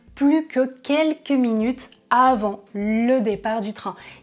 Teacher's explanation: Dans ce cas-là, très spécifique, vous ne prononcez pas le S du mot plus.